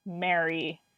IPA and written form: me͡əɹi (Mary)